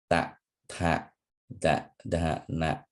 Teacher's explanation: pronounced with the tip of the tongue against the teeth, and the retroflex letters pronounced with the tip of the tongue curl back against the palate, giving a hollow sound. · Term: dental letters